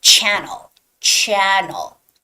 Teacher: And the stress goes on the first vowel, first syllable, which is channel, channel 11